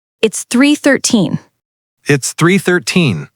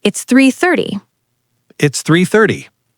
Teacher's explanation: 13 is a kick at the end. 30 is smooth in the middle.